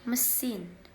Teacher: the a in the word machine is pronounced as a very weak indistinct sound represented by an upside down e